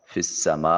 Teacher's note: یا کو نہیں پڑھیں گے، فا کو براہ راست سین سے ملاتے ہوئے میم کی آواز کو لمبا کریں گے۔ مد ہے اور یہ بڑی مد ہے۔ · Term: مد متصل